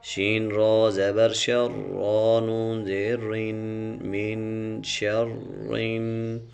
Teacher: را کے اوپر اگر زبر ہو یا پیش ہو را سے پہلے اگر زبر یا پیش ہو تو را پور یعنی موٹی ہوگی